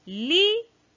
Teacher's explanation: La sílaba tónica está en li